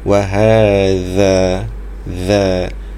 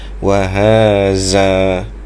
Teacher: Kalau kita tidak keluarkan gigi maka dia akan jadi huruf zain. · Wa ha 2 harakat sebab mad asli kat situ. Wa hadzal za tu disebut seperti huruf Z, tetapi dikeluarkan sedikit lidahnya. Diletakkan lidah di antara 2 gigi atas dan bawah.